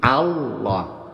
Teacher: Allah yang benar mana harakat hamzahnya itu fathah a bukan o · antara a dengan lam itu ada bunyi sengau